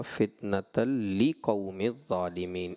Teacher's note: جب آپ نے دوسری آیت مجیدہ کو پڑھا تو ایک مقام آیا تھا ربنا لا تجعلنا فتنة للقوم الظالمین، آپ نے پڑھا فتنة لقوم الظالمین، ایک لام آپ محذوف یعنی حذف کر گئے